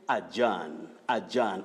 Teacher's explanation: It is the weak sound then you have the primary stress, then you say John · When you look at the phonetic transcription that I've used right here, this is the long mid-central vowel sound